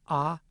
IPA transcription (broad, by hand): ɑ